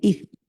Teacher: পাতলা হবে জীব বের হবে সামনের দাঁতের সাথে লাগবে